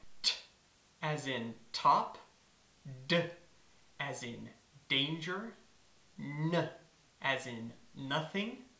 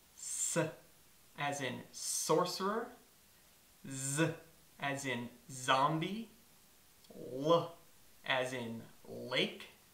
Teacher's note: An alveolar is a sound that's made by touching the tip of the tongue on the alveolar ridge, that weird, hard, bumpy thing right behind the front teeth.